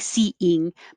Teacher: And then you can make it slide together a little smoother, and it makes a Y sound because you're going from the high position, your tongue's very high for E, and then it comes down for ying